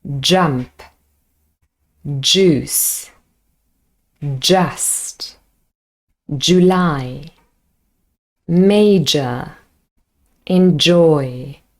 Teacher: this sound is a voiced alveolar palatal affricate sound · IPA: dʒ